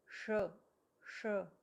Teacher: इसका उच्चारण करते हुए हमें अपने तालु को स्पर्श करना है जीभ से।